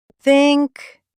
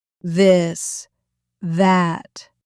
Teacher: Soft TH, no voice. Hard TH, voice on.